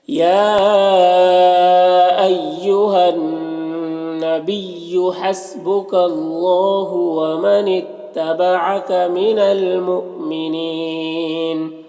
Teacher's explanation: یہاں پر اللہ کے لام سے پہلے کاف کے اوپر زبر ہے، اللہ کے لام کو پر پڑھیں گے۔